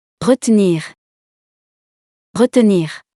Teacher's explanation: Both are correct. You can choose whether you pronounce the second E, or not.